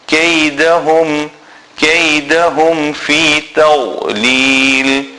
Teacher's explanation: This Ha is a small Ha from the bottom of the throat and beginning of the chest